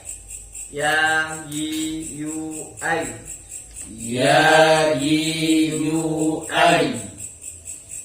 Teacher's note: ini huruf-huruf yang menggunakan alat ucap tengah lidah.